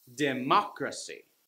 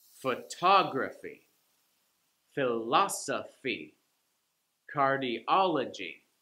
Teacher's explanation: the third from the last syllable gets the stress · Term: syllable stress